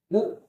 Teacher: उ हमारा ह्रस्व है, ह्रस्व स्वर है। ये हमारा ओष्ठ में आएगा।